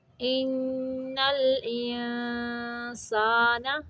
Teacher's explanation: والعصر ان الانسان، ان پہ نون مشدد کا غنہ ہے، انسان پہ اخفاء کا قاعدہ ہے۔